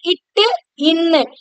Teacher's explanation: நம்முடைய நாக்குடைய நுனியானது அன்னத்துடைய நுனியை தொடுறதுனால பிறக்கும். இட்டு, இன்னு அதாவது இந்த நாக்குடைய நுனி பகுதி இந்த இடத்துல அதாவது அன்னத்துடைய இந்த நுனி பகுதியை தொடும். · இந்த இரண்டு மெய் எழுத்துக்களும் நம்ம சொல்லும் பொழுது இட்டு, இன்னு அப்படிங்கும் போது நம்முடைய நாக்குடைய நுனியானது அன்னத்துடைய நுனிய தொடுறதுனால பிறக்கும்.